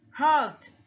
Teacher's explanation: Ở đây chúng ta thấy hurt làm ơ kéo dài.